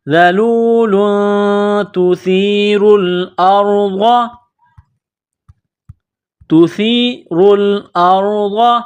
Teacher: تنوین کے بعد تا ہے، حروف اخفا ہے تو آواز ناک میں چھپانی ہے، غنہ کرنا ہے.